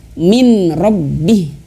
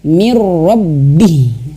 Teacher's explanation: harus masuk ke huruf ro dan tanpa dengung